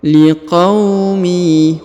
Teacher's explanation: Huruf qa diayun sekali ya karena terdapat waw sukun di depannya.